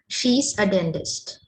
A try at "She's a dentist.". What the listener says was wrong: So when a letter like A comes there, you have to reduce it to the schwa.